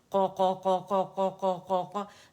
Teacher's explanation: زبان کی جڑ نرم تالو سے لگے گی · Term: قاف